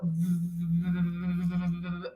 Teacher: the point of articulation of the V it's it's a labial dental because we have the bottom lip and the top teeth that touch each other when we make this sound · the V is a fricative because it is a sound that is continuous. We can we can continue the sound. · We can we can continue the sound. If I take a deep breath and I start to produce the V sound, I can hold the sound as long as I can hold my breath.